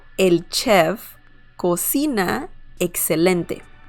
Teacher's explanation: that's how you pronounce chef in Spanish, a more hard ch sound